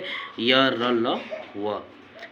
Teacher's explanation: इनका उच्चारण जीभ के तालु दंत ओष्ठ को स्पर्श करने से होता है परंतु कहीं भी पूर्ण स्पर्श नहीं होता है। इन्हें अंतस्थ व्यंजन कहलाते हैं।